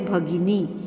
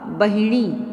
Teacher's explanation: भगिनी जिसमें महाप्राण है लेकिन उसको आसान करने के लिए इन्होंने भगिनी का बहिणी शब्द प्रयोग करना प्रारंभ कर दिया